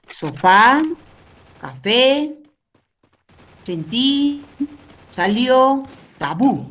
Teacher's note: Esos terminan en la última sílaba, la fuerza de voz.